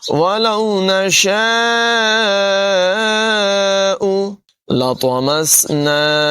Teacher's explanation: طا کی ادائیگی پر ہوگی، سین کی آواز باریک ہوگی